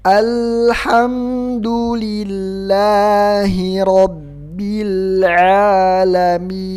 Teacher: Jadi jangan dibaca al, jangan dipantulkan al, tapi ditahan. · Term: ditahan tanpa dipantulkan